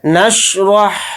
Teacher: نون کو شین ساکن کے اندر ملا دیں گے · را کو یہاں پر موٹا پڑھیں گے یعنی پر ، اور را کو ہا ساکن کے اندر ملا دیں گے،